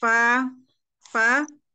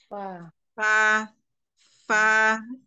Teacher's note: bibir bawah bertemu dengan ujung gigi seri atas